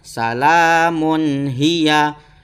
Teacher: Di harokat mimnya itu adalah dhammatain ya, termasuk tanwin yang bertemu dengan huruf ha, maka harus dibaca jelas atau terang